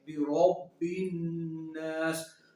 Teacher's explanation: تو اگر آپ غور کریں، را کو پر زبر ہے، را کو پر زبر، تو را کو پر پڑھیں گے، یعنی کہ موٹا پڑھیں گے